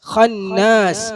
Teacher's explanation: നൂനിനെ എന്ത് ചെയ്യണം? നേർപ്പിക്കണം. ഖായിനെ മാത്രമേ കനപ്പിക്കാവൂ.